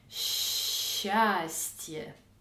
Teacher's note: on prononce tout simplement un grand ch